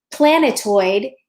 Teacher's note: the heaviest stress is on the first syllable but the second heaviest stressed is on the third syllable